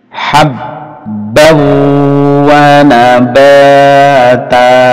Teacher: Jadi nun ini hilang, masuk ke wawu dan mendengung. Mendengung itu di hidung.